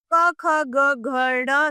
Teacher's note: क ख ग घ ड़ सम्मिलित होते हैं। इनका उच्चारण कंठ से होता है।